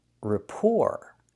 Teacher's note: We see the first syllable is not stressed. So, the vowel is pronounced very relaxed. R. And the second syllable is stressed. · And the second syllable is stressed. Rapport. And the t at the end is silent.